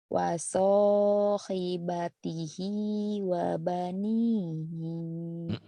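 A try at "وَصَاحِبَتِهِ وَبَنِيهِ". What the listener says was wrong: Hinya pendek. Kan tanahnya ada yang panjang. Jadi enak, jadi yang pendek jadi dipanjangin.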